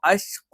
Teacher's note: ഖാഫ് എന്ന് പറയുമ്പോൾ നാവിന്റെ ആരംഭം ഈ പറയുന്ന അണ്ണാക്കിന്റെ മൃദുലമായ ഭാഗത്ത് വെച്ചുകൊണ്ടാണ് നമ്മൾ ഉച്ചരിക്കുന്നത്.